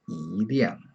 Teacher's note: you pronounce it 一亮, because that's the fourth tone